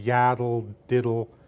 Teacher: The beat would fall on ya and dum, but if you do a quicker beat, it would be yaddle, diddle. So the weakest syllables use D with a syllabic L there